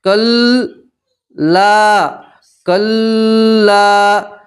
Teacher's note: लाम के साथ अलिफ मद्दा इसलिए आप एक अलिफ के बराबर खींचेंगे।